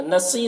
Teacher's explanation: صوت کو پر پڑھیں گے، حروف مستعلیہ میں سے ہے